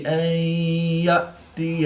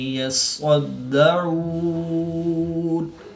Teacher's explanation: حمزہ اور عین کی ادائیگی میں فرق کریں گے۔ حمزہ کو حلق کے نیچے والے حصہ سے اور عین کو حلق کے درمیان والے حصہ سے ادا کر کے پڑھیں گے۔